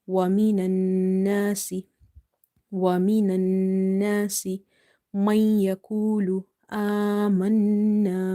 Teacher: hold the sound of noon in the nose by doing nasalization.